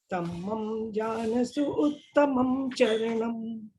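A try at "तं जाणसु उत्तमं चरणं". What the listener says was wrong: तम्मम नहीं, तम जानसु, नहीं तम जानसु, ये शब्द है ना, तम जानसु, तमम नहीं है,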